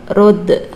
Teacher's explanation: Rod ini termasuk hukum bacaan qalqalah karena ada huruf qalqalah yaitu dal sukun di tengah kalimat, namanya qalqalah sugro.